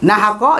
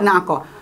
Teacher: Ha dengan ain tu sama makhraj.